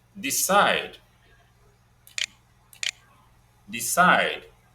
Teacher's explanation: Decide. Stressed on the second syllable.